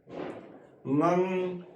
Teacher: ਸਾਡੀ ਜੀਭ ਹੈ ਉਹ ਉੱਪਰ ਤਾਲੂਏ ਨੂੰ ਟੱਚ ਹੁੰਦੀ ਹੈ ਤੇ ਸਾਡੇ ਮੂੰਹ ਦੀ ਆਵਾਜ਼ ਬੰਦ ਹੋ ਜਾਂਦੀ ਹੈ ਤੇ ਆਵਾਜ਼ ਉਹ ਨੱਕ ਰਾਹੀਂ ਬਾਹਰ ਆਉਂਦੀ ਹੈ। ਗੰਗ ਜਦੋਂ ਗ ਬੋਲਣਾ ਹੈ ਉਦੋਂ ਜੀਭ ਤਾਲੂਏ ਤੋਂ ਨਿੱਚੇ ਹੋ ਜਾਂਦੀ ਹੈ ਤੇ ਆਵਾਜ਼ ਫਿਰ ਮੂੰਹ ਰਾਹੀਂ ਬਾਹਰ ਆਉਂਦੀ ਹੈ।